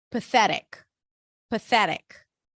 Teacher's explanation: pathetic pathetic stresses on the second syllable pathetic p pa as in red P voiceless th and then